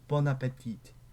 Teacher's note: The N is the liaison because appetit starts with a vowel.